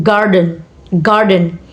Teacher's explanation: Garden stress on first syllables. And the second is secondary stress. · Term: primary stress